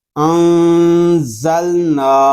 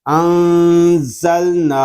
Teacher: نون کے اوپر کھڑا زبر ہے اور کھڑے زبر کو ہم ایک الف تک کھینچ کر پڑھیں گے۔